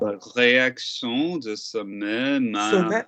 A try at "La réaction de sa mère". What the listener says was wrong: But stop banging them to make them correct. Yeah, you don't need to bang to get the twang. Yeah, sustain. La réaction, and we don't need a big ass fucking mouth either.